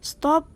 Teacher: T pada stop ini disesuaikan atau diasimilasikan artikulasinya dengan S yang mendahulinya sehingga sama-sama lamino palatal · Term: asimilasi progresif